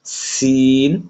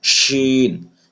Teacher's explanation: সিন একটু পাতলা করে শক্তভাবে পড়তে হবে, আর শিন হরফ গাল ভরে পড়তে হবে, বাতাস বের হবে, সিনেও বাতাস বের হবে।